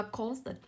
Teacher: âm thứ hai của cô là ơ. Vậy trọng âm không rơi vào ơ, nó rơi vào âm tiết đầu